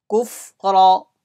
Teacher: Ra will be read with full mouth.